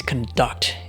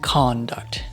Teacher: the verb is conDUCT and the noun is CONduct